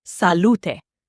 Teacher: Stress on the middle, lu, and that final e is not silent. Salute, not salute like English.